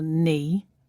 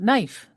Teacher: So knee and knife start with silent K.